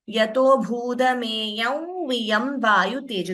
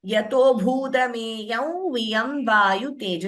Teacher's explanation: instead of pronouncing the Anuswara completely, we chant it as Yato bhudameyam viyam vayu tejo. The nasal tone to V.